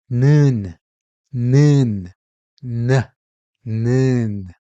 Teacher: when you pronounce 는, the airflow is briefly blocked by the tip of your tongue, like 는, 는, 는.